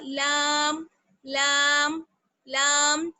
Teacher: زبان کو تھوڑا سا جب چوڑا کریں گے اور اس کو ہم اوپر کے دانتوں کے مسوڑوں پر لگائیں گے تو وہاں سے ادا ہوگا